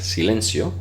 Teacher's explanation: todo como S, aunque haya una C. Silencio, porque pues es un impedimento.